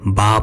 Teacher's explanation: وہ حروف جو اردو میں اے کی آواز پر ختم ہوتے ہیں عربی میں آ کی آواز پر ختم ہوتے ہیں